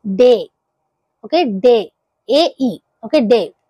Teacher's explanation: రెండు vowel sounds అనేవి కలిపి పలుకుతాం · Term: డిఫ్థాంగ్స్